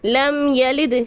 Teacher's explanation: لم پہ میم ساکن کے بعد یا ہے، یہاں پر اظہار شفوی ہو رہا ہے